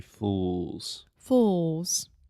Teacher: it has the final L sound which in linguistics if you are a linguistics nerd we call that the dark L